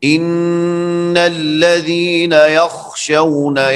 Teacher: یہاں پر دیکھیں ان الذین یخشون، خا موٹا پڑھا جاتا ہے، آپ اس کو باریک جب پڑھیں گے تو یہ غلط ہوگا